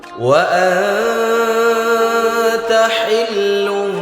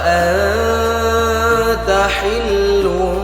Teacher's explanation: nun sukun berjumpa dengan huruf ta. Maka hukumnya ikhfa harus kita samakan kemudian didengungkan dua harakat.